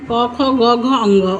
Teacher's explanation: क ख ग घ अंग अगर आप बोल रहे हैं तो कंठ का यूज हो रहा है